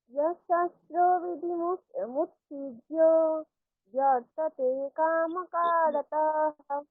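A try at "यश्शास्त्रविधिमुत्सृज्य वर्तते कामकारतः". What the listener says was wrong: कामकारतः একসঙ্গে, হ্যাঁ, রতাহ রতাহ হয়ে যাচ্ছে, কারতহ, রতহ একসঙ্গে, হ্যাঁ।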